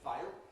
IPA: faɪr